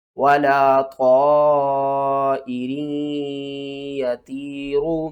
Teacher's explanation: یا ساکن سے پہلے طا کے نیچے زیر ہے، حروف مدہ ہے، 1 الف کے برابر کھینچیں گے